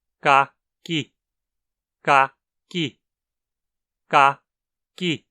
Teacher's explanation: O segundo K, antes de I, é pronunciado ligeiramente mais para frente que o primeiro. Ka-ki. Ele não chega a ser palatalizado, nem é para frente o bastante para ser uma consoante palatal propriamente dita, mas ele é um pouco mais para frente que o primeiro K de qualquer forma.